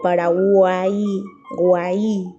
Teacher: cumple con el patrón de tres vocales cerrada abierta más cerrada donde la abierta es la sílaba tónica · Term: triptongo